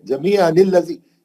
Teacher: सीधा इधर तनवीन के नून साकिन के ज़ेर से लाम में चला गया, दोनों अलिफ फसले हो गए।